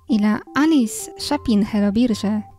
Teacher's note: Alice is our proper noun, and is flanked by glottal stops on both sides.